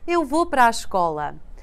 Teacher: Many times we drop the first A in para.